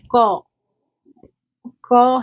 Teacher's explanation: અઘોષ અલ્પપ્રાણ કંઠસ્પર્શી નિરનુનાસિક વ્યંજન ધ્વનિ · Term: કંઠ્ય ધ્વનિ